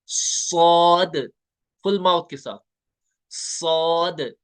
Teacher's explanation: पुर पढ़ने का तरीका मैंने बोला था, जुबान जो है ना पीछे, जुबान की जड़ जो है वो तालू की तरफ बुलंद होती है।